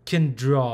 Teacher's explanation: there's a nasal sound before the sound the main sound and so the main sound should come from behind the the upper teeth gum where the tongue is at so uh there's really no equivalent